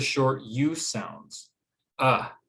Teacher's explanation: this sound is actually in the middle of the mouth it's the most relaxed and easiest of all the english sounds to make